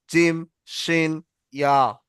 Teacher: জিভের মাঝখান আর উপরের তালুর সঙ্গে উচ্চারণ হয় 3টি অক্ষর